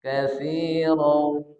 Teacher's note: Idgham bi gunnah. Cara bacanya dengungkan, tahan. Katsiran. Jadi dia masuk ke hidung.